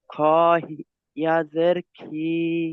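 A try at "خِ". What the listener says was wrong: জের খি, ইয়া নয় খাড়া জের, খাড়া জের। খ, খ খাড়া জের, ই নয় খি,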